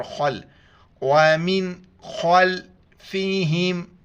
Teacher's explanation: خا کو موٹا کر کے پڑھیں گے